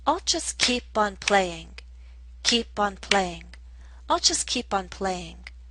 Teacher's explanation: the overall rhythm is telling us to stress the verb, keep, and this ing form of the verb, playing